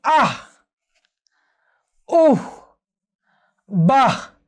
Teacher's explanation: শুধুমাত্র বিস্ময়সূচক অব্যয়ের ক্ষেত্রে আমরা এই যে বিসর্গের উচ্চারণ যে হয়ের মতো, এটি আমরা দেখতে পাই।